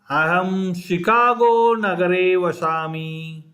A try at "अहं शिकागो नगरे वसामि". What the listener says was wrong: It's not vashami, you have to say vasami.